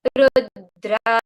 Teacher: The dra sound goes to a slightly lower tone than the rest of the word. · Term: intonation